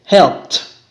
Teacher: No hay vibration, entonces termina en T.